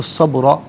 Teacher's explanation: با ساکن ہے لیکن حرف قلقلہ ہے تو آواز لوٹتی بھی محسوس ہونی چاہیے۔ را پر دو زبر کی تنوین پر کر کے پڑھیں گے، اور یہاں وقف پڑھیں گے تو تب بھی را کو پر کر کے ہی پڑھا جائے گا۔